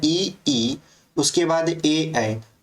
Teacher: अपने से बोल के ट्राई करोगे तो आपको महसूस होगा कि ये जो ई ई और ए आ निकल रहा है ये आपके अगले ही जीभ के पार्ट से निकल रहा है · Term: अग्र स्वर